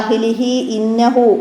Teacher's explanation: തൊട്ടു മുമ്പുള്ള ഹാഇനെ ഒരു അലിഫിൻ്റെ അത്ര നീട്ടണം